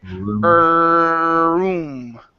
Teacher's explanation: So hold the R for a long time.